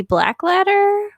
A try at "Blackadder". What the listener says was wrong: No, Black Adder. Black Adder, no L. Black Adder.